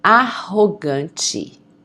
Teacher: when you have two R's in the middle of a word, the pronunciation of the R is going to be a H, okay? Like the H in English.